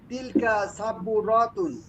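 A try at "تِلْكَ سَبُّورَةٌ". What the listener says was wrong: আচ্ছা শুনেন এবার, এই যে মিস্তরাতুন এখানে টান দিয়েছেন আর এখানে টান দিয়েছেন সাব্বুরাতুন, এখানে টান নাই। হ্যাঁ, এখানে কিন্তু খালি আলিফ নাই।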